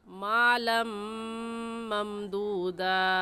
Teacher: मालन कहना गलत होगा और सही लफ्ज़ है लाम को मीम के साथ मिलाकर मालम ममदूदा।